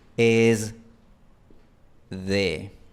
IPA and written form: 'ez ðe (es de)